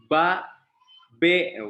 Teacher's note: Harus ketemu bibir atas dan bibir bawah.